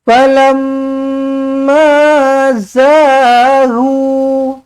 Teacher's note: mim sabdu wajibul gunna, dengungkan dua harakat